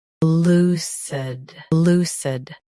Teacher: Stress. Lu. Keep cid soft and quick.